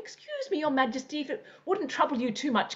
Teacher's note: whereas with the King your voice becomes higher and more flowing